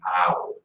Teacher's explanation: For the oi, we're going from a long O sound, oi. And for ow, we're going from the ah to the oo sound